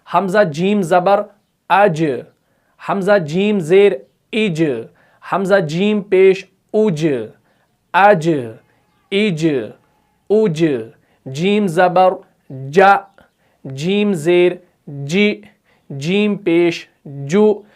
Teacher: आपको यह महसूस हो रहा होगा कि हमारी जुबान का जो बीच वाला हिस्सा है ये ऊपर के तालू के साथ पहले चिपक रहा है, उसके बाद ही जीम अदा हो रहा है